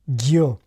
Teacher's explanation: some non sibilant friction, ʝ, ʝo, it's also often affricated, ɟʝo